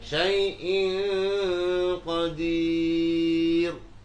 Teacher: Ra-nya sukun karena wakaf jatuh setelah harokat kasrah, dibaca tarqiq.